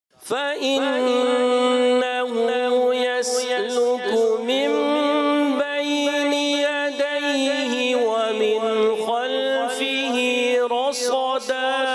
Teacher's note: صاد موٹا را بھی موٹا اور صاد اس سے زیادہ موٹا ٹھیک ہے پھر دال باریک کریں گے